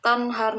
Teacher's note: nun mati bertemu dengan ha yang merupakan salah satu dari huruf izhar, maka dibaca secara jelas.